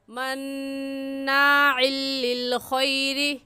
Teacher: مناع میں نون مشدد ہے اور نون مشدد پر ہمیشہ غنہ ہوتا ہے · را کے نیچے زیر ہے اس لیے را کو باریک کر کے پڑھیں گے، اور باریک کرنے کا طریقہ کہ آپ کے دونوں ہونٹ پھیل جائے۔